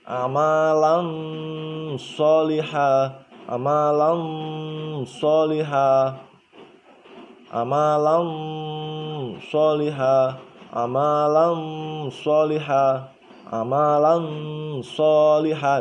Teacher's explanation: Nah, jadi masuk ke makhrajnya huruf shod tapi dengung.